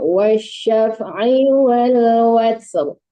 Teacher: jangan wa-nya dipanjangkan, ai-nya juga jangan panjang